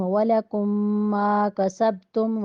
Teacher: کم ادغام شفی، کسب کے با کے اوپر قلقلہ